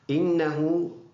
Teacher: اِنَّهُ نون مشدد، ایک الف کی مقدار اس میں غنہ ہے. ہا یہ ہا ہے جو سینے سے ادا ہونے والا ہے، اور اس کے اوپر الٹا پیش ہے، ایک الف کی مقدار لمبا کر کے پڑھنا ہوتا ہے.